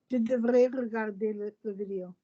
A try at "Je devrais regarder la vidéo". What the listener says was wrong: Lovely, your vowels are nice, but don't say r. You're not doing Spanish or Italian. It's r like a scrape. Yeah, it's not devrais, it's devrais. But you don't even need to do that much R if you don't wish to.